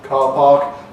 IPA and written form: ˈkɑː pɑːk (car park)